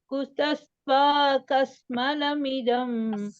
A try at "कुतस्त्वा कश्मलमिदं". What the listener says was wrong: Not to say. Not kas. Kash. Kashmalamidam.